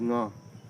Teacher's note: Voice nasal velar is nga